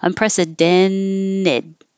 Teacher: When the T comes after the N in the unstressed syllable, you can hold the N and just make the T disappear